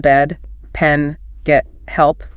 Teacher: Your mouth is sort of mid open and your tongue is forward but relaxed. It's the sound in bed. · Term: short E